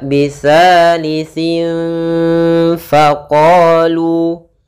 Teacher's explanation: dengan huruf-huruf Ikhfa yaitu yang 15 salah satunya ada huruf Fa maka harus kita samarkan suara tanwinnya atau suara huruf nnya atau suara nunnya kepada huruf Fa maka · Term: ikhfa Hakiki